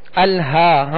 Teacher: ہم نے ہا کو کھینچا اس لیے کہ یہ کھڑا زبر ہے